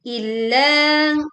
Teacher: tekan lam bertasydid dan panjangkan huruf la